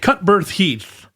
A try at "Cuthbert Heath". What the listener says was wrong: No, you just said Cutbirth. Cutbirth is like the umbilical cord.